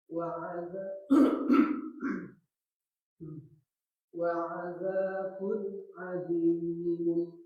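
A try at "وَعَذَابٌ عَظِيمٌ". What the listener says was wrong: Ya, jangan dihentakan, Pak. Wa azabun azimun. Nah, jangan dihentakan, Pak. Azabun bun jangan bun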